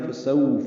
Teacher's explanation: واو ہونٹوں کو نا تمام گول کرتے ہیں، وہ آگے لاتے ہیں، یہ واولین ہے